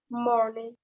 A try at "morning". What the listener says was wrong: kurang bulat. Mo. Mo. Mo. Morning. Morning. Morning. Morning. Morning.